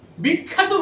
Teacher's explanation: কাজটা হচ্ছে এই, দুটো শব্দ বলে দেখুন, একটা হচ্ছে খ্যাত, যেখানে জফলায় আকারটা উচ্চারণ বোঝাচ্ছে, আর একটা হচ্ছে বিখ্যাত। বিখ্যাত বলতে গিয়ে দেখলেন খটা কিন্তু দুবার উচ্চারিত হয়ে গেল